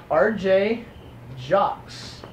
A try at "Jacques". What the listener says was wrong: The S is not heard, it's silent.